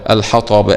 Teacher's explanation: لام مظهرة قمرية، حكمها الإظهار وجوبا لوقوع الحاء بعد اللام القمرية